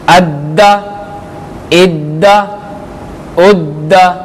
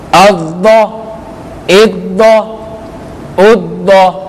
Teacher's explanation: ضاد کو پر یعنی موٹا پڑھیں گے